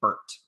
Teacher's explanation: one more vowel that's also mid and central which is er like in bert